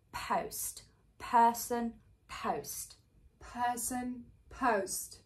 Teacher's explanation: the tongue doesn't have to sink and it stays central that's the key to that diphthong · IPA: /əʊ/